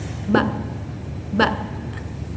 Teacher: huruf ba ini keluar dari dua bibir yang tertutup rapat lalu dilepaskan. Nah, dia ini bersifat infijari dan majhur.